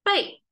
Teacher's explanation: when it's a noun form, it's the falling tone, that means the back